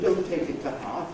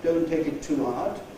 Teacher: say it with the long strong form of ‘to’ and say it as /tuː/